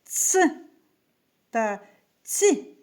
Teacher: під час вимови повітря зустрічає перешкоду кінчик язика за нижніми зубами